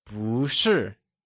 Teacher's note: when 不 is used with another fourth tone, it changes to second tone